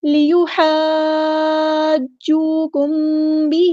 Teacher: ہا کو وسطی لیکن مڈل تھروٹ سے ادا کرنا ہے. یہاں پہ مد آ گئی ہے مد لازم.